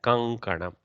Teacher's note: there is a consonant of ka group in front of anuswara, hence the fifth letter ng of kavarga replaces anuswara. Therefore, it should be written as kankanam, like that.